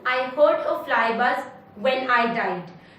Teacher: In this poem we have iambic meter because it has a weak syllable followed by a strong syllable. Also it has 4 feet in one line, so it will have tetrameter and not pentameter.